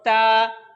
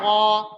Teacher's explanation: تا کی آواز باریک، قا کی آواز موٹی